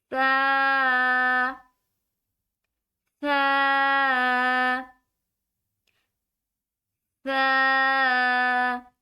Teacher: سا کو پڑھنے کے لیے اپنی زبان کو تھوڑا سا منہ سے باہر نکال کر پھر ادا کیا جائے گا